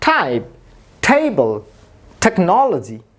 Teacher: খেয়াল করুন টাইপ, টেবল, টেকনোলজি। সবগুলোতে কিন্তু মুখ দিয়ে একদমকা বাতাস বের হচ্ছে এই টি লেটারটি উচ্চারণ করার সময়। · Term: অ্যাসপিরেটেড